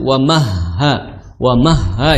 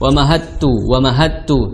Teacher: ada tasydid di atas ha, maka dibunyikan, ditahan dulu, wa mahha, jangan wa mahattu, tapi wa mahha, seperti itu.